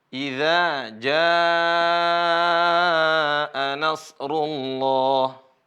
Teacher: Idza ini mat panjang za karena ada alif. Kemudian ja juga panjang. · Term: mad asli